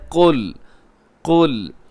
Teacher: قاف موٹا رکھیے گا، لام باریک رکھیے گا۔ اسے اکثر لوگ قل کہہ دیتے ہیں اور لام کو کیا کر دیتے ہیں، موٹا کر دیتے ہیں۔